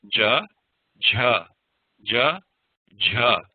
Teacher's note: ahead we have the soft version j j j j again J you shouldn't feel breath coming out